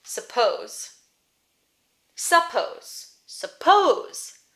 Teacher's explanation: Pose is the stressed syllable. So the sound is over here.